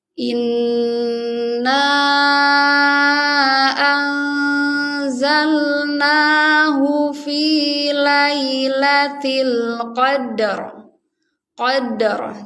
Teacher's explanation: Qadar. Jadi qalqalahnya tetap dibaca, dalnya jadi qalqalah, rohnya dibaca tebal.